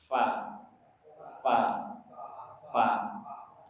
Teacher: dia menyentuhkan perut bibir bawah dengan ujung gigi seri atas. Ujung gigi ini disentuhkan dengan bibir bawah perutnya tengahnya. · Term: huruf fa